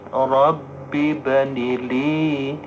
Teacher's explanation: ninya panjang, jangan tersendat